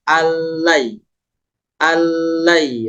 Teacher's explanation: lam nunnya enggak dibaca Kenapa karena ini hukumnya am bilunah yaitu Nun masuk ke lam lamnya sehingga ditahan ditasdid tanpa didengungkan cukup satu Cukup dua ketukan ketukan keduanya pindah allai allai pas